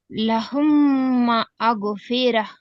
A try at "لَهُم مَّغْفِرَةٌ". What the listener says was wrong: అక్కడ కట్ అవుతుంది మాట ఎందుకంటే. ఒకే పదంలో చదవండి, రెండు పదాలు చదవండి. మగ్ఫిర.